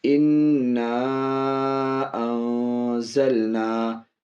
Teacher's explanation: انا الگ کلمہ ہے، انزلنا الگ کلمہ ہے، اس لیے مد تو ہے لیکن مد منفصل ہے، تھوڑا کم کھینچیں گے